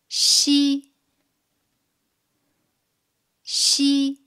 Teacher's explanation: While qi brings out a strong air flow, ji doesn't. When xi is pronounced, the surface of the tongue approaches the hard palate without reaching it, leaving a gap in between.